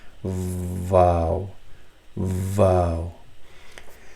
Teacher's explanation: Upper teeth, the edge of the upper teeth touching your bottom lip, and touching it completely